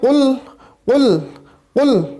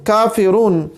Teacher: دو نقطوں والا قاف ہے اور یہ پر پڑھا جاتا ہے